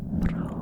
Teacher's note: in Scotland we roll our R's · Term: the rolling R